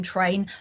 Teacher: But if you think about the word train, the t and the r, you can hear those separately in train. So they are not one sound, they are two sounds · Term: consonant cluster